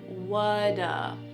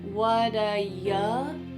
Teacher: that T at the end of the word what is going to change to a D sound. This is really typical of American English, where a T that's surrounded by vowel sounds is going to change to a D. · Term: flapped